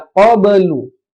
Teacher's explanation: Ada ba sukun maka mantul ya. Qablu. Jangan qablu tapi qablu.